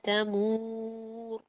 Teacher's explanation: تیمور کا را موٹا کر کے ہم نے روکنا ہے